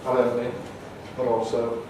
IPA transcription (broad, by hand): nɒd əʊnli bəd ɔːlsəʊ